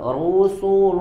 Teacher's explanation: hati-hati biasanya lamnya dibaca dengan tebal rusul ya luya tipis dulu ru tebal su dan lamnya tipis